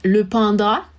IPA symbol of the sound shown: ɑ̃